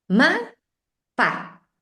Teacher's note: acentúan las dos sílabas y en su mente tiene sentido lo que están haciendo